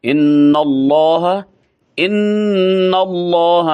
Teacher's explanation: अल्लाह की लाम को पुर करेंगे। अल्लाह को लफ्ज़ जलाला कहा जाता है, यानी लामे जलाला इसको कहा जाता है।